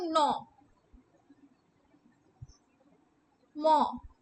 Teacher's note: এই প্রত্যেকটি উচ্চারণের সময় কিন্তু আমাদের নাসিক মানে নাকের কিন্তু সাহায্য লাগে। নাক দুটো চেপে তুমি ম উচ্চারণ করো, দেখো নাসিকার এই যে গহ্বর দুটো মানে নাকের এই জায়গাটা চেপে তুমি ম উচ্চারণ করো, দেখো পারো কিনা, কিংবা ন উচ্চারণ করো, দেখো হচ্ছে কিনা। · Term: নাসিক্য ধ্বনি